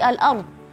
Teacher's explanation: Kalau rnya mati maka kita lihat harakat sebelumnya seperti al-ard. Ra mati sebelumnya fathah kita baca tebal. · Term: ra tebal